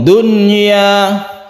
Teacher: Membacanya idhar dan tidak dengung. Dunya, sukun nunnya itu harus jelas dan tidak bertasydid. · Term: idhar wajib